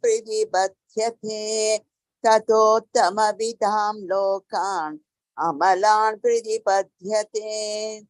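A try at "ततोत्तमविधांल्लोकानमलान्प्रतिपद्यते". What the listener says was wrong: Avitalokan. This is instead of this anuswara, you'll say this anunasika lo il. Tadottama vitalokan. Pratipadyate.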